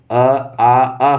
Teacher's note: जो अ, आ, अह है, ये आपका कंठ ध्वनि है